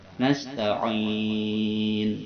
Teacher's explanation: Jadi wa iyyaka nasta'in, dia di bawah lisannya. Ain berada di tengah tenggorokan, kita tekan.